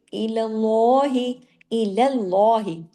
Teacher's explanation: सब कुछ बारीक पढ़ा लेकिन जब हम अल्लाह के नाम के अंदर गए तो हमने सिर्फ लाम को हैवी किया।